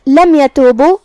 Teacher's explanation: یہاں میم کا حکم ہے اظہار شفوی تو ہم میم کو ظاہر کریں گے